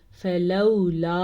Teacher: یہ مد تقریباً 3 الف کے برابر ہے، تقریباً 2 سے 2.5 سیکنڈ تک لمبی کی جانے والی مد ہے۔ اور اس کے علاوہ پیچھے جو ہے لام زبر وا لو، اس کو کہتے ہیں واؤلین۔